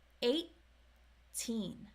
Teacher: in 18, there is a held T before the regular T